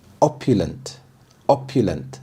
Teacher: The stress is on the first syllable, opulent.